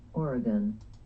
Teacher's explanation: The stress in Oregon falls on the first syllable